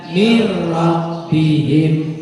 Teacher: Cara bacanya dibaca tidak dengung, itu aja. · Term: idgham bila gunnah